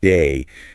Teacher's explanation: the a sound in a word like day can sound a bit more like die.